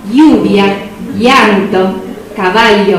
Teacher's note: se llama el iotacismo, que es diptongar, si se quiere, formar un diptongo a partir de la doble L.